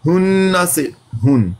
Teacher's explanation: ہن، نون مشدد پر ہننا کیا جاتا ہے، نون پر شد برقرار رہے گی لیکن زبر نہیں پڑھی جائے گی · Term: ساکن